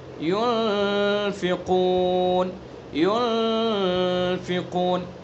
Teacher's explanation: ایک تو کہ ناک سے سیدھا، ناک سے نہیں ادا کریں گے اس کو، بلکہ ناک کے باسے سے، ناک کی جو نرم ہڈی ہے وہاں سے چھپا کر ادا کریں گے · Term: اخفا